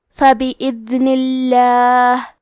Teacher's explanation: کلمت فبإذن میں دال ساکن ہے تو ہمیں دال کو ظاہر کرنا ہے، اور کیونکہ نون کے نیچے زیر ہے تو لفظ الجلالہ کے لام کا حکم ہے ترقیق، تو ہم حرف اللام کو پتلی آواز میں پڑھیں گے.